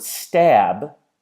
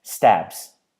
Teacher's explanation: you can feel when you make the B noise on your throat that your voice box, your larynx, is on